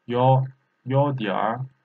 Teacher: Here, third tone and third tone, we have a rule. This becomes second tone.